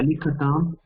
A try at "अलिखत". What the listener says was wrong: अलिखत இங்க अलिखत சொல்லக்கூடாது ஏனா ஹலந்த் இல்ல